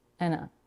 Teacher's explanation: in end we can drop the final D and blend in with the article a which will reduce to awwa and and in big we have